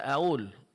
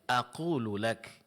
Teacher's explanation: huruf qaf berubah menjadi huruf hamzah atau huruf alif.